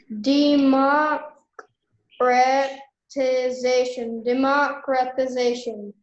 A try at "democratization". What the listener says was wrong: Democratization. Don't forget. You forgot the t sound. You left out the t sound.